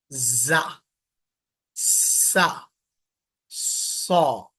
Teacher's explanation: जबान की नोक नीचे के दांत की जड़ में लगेगी